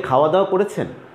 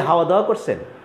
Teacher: ওরা খ স্পষ্ট করে উচ্চারণ করে না, খকে ওরা হ উচ্চারণ করে।